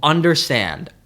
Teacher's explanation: Anapest is 2 unstressed syllables, then 1 stressed syllable.